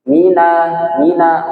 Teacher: huruf mim kalau dengung itu keluarnya ke rongga hidung